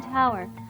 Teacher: The letter t is an aspirated t sound as in tower. The process for making this sound is the same as a d, with the only difference being that this one is more aspirated.